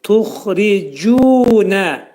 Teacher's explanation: Cim hərfi dilimizdəki c hərfindən biraz fərqli olaraq yumuşaq şəkildə, incə şəkildə oxunacaq.